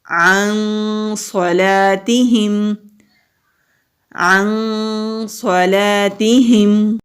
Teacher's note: نون ساکن ہے، آگے صاد آ رہا ہے، یہاں پر ہم اخفا کریں گے۔ اخفا کہتے ہیں نون کی آواز کو چھپانے کو